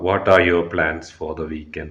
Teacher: use a rising intonation at the end to express curiosity or interest